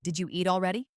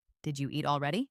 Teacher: Did you becomes did ya.